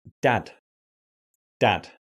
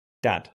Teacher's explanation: your tongue touches the ridge behind your teeth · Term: d sound